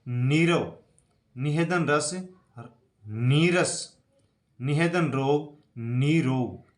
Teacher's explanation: विसर्ग का तो लोप हो जाता है, लेकिन जो ह्रस्व छोटी ई और छोटा ऊ है ये अपने दीर्घ रूप में बदल जाते हैं · तो यहाँ पर छोटी नी बड़ी नी में बदल गई है और विसर्ग का लोप हो गया है। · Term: विसर्ग संधि